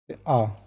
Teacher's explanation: मध्य स्वर, इसमें जीभ का बीच वाला भाग थोड़ा सा ऊपर उठता है